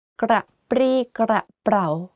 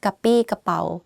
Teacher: you have รอเรือ which force you to click your tongue while you are speaking